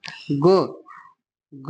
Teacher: ग जो है आपका कंठ तो है, स्पर्श भी है